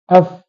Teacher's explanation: hujung gigi kacip atas yang diletakkan pada bibir bawah pada bibir bawah maka bibir bawah apabila bertemu dengan hujung Gigi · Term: makhraj Fa